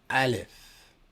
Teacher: The A in aleph represents a consonant that is pronounced from the back of the throat.